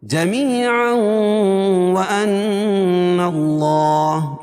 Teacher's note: جمیعا وان اللہ، نون مشدد ہے، غنہ ہوگا، اور اللہ کے لام سے پہلے زبر ہے تو اللہ کا لام پور پڑھا جائے گا